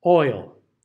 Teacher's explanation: be sure that you get the I in there. Otherwise, it's going to turn into just the plain old aw, which is going to change the meaning of your word. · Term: diphthong